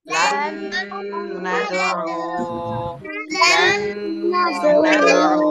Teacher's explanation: লাম নুন জবর লান, নুন সাকিনের পরে নুন, ইদগামে বা গুন্না, এজন্য গুন্না সহ মিলাতে হবে।